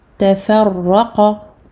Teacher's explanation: Raqa, emphatique. On double le ra et on le fait mufakhama.